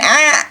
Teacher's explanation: Kita bunyikan a, tidak ada napas keluar, berarti terjahar, tertunaikan.